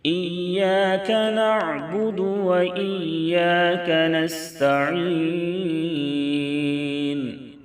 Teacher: عین کو درمیانی حلق سے ادا کریں